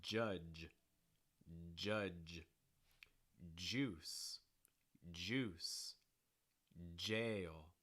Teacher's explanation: the tip of your tongue is going to start low then very quickly touch the top of your mouth right around where your gum and your tooth meet that alveolar ridge and then it's going to fall back down again so it's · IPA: dʒ